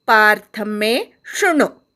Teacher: पार्थ मे शृणु, शेवटचा णू पटकन म्हणायचा, ऱ्हस्व आहे म्हणून